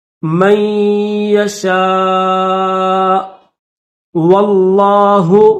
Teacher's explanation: واو کو لفظ اللہ کے ساتھ ملائیں گے اور لفظ اللہ کو موٹا کریں گے